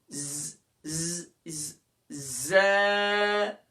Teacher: ثنایا علیہ اور ثنایا سفلا یعنی اوپر والے اور نیچے والے دونوں دانتوں کے اندرونی کنارے سے ادا ہوگا. ز ایک الف کی مقدار سے زیادہ نہیں کھینچنا.